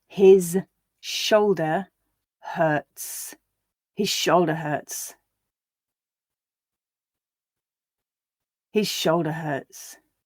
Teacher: you wouldn't hear the voice there on the sh at all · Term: voicing